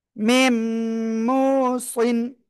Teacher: আর নুন সাকিনের পরে এই মিম আসছে, ইয়া ওয়া মিম নুনের চারটে অক্ষরের একটা আসছে, এজন্য গুন্নার সাথে মিলিয়ে পড়বো। মিম, মিম অপেশ মু, মিম মু।